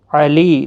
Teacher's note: لی یا مدہ ہے، ایک الف کی مقدار کے برابر کھینچ کر پڑھیں گے، اور وقف کی صورت میں یہاں پر وقف بالابدال ہوگا، دو زبر کو بدل کر ایک زبر کے ساتھ وقف کریں گے، الف مدہ بنے گا، ایک الف کی مقدار کے برابر کھینچ کر وقف کریں گے۔